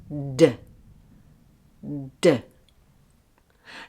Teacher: for the D sound release, the air using your voice